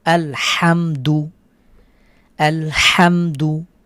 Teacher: মিম সাকিনের পরে দাল এসেছে, গুণনা ছাড়া স্পষ্ট করে পড়ব